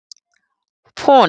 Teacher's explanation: इसको बोलने में ज्यादा सांस लेनी पड़ती है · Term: महाप्राण